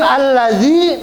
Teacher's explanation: Huruf sebelumnya yaitu huruf dalal harakatnya kasrah maka ya di sini berfungsi sebagai huruf mad ya panjang zinya panjang Inilah yang disebut Mad thii ada Ya Sukun ya berfungsi sebagai